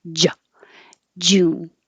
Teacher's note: So you really need to stop the airflow by pressing your tongue on the top of your mouth, j, and building up pressure behind it. So when you release it, you're releasing with a burst of air as well as sound.